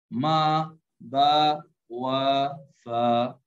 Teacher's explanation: ہونٹوں سے ہوں 4 ادا